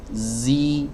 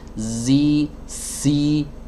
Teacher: desis pada huruf Zain tidak disertai aliran nafas Oh ya kalau disertai aliran nafas maka dia akan berubah menjadi huruf Sin ya Zi ini tanpa aliran nafas kalau saya kasih aliran nafas